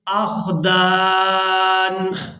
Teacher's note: وقف کی صورت میں نون جو ہے یہ ساکن ہو جائے گا، دال کو الف مدہ کی وجہ سے کھینچتے ہوئے اس نون ساکن کے ساتھ ملائیں گے